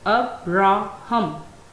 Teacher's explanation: It has three syllables, and you can see the primary stress is on first syllable. First syllable has the primary stress, second syllable is unstressed, and third syllable has secondary stress.